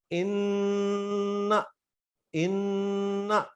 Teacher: میری زبان ان میں پوری تالو کے ساتھ لگ رہی ہے، لیکن میں انکرا جب بولوں گا تو میں اپنی زبان اوپر تالو پہ لگنے سے بچاؤں گا تو میرا اخفا 100% صحیح ہوگا.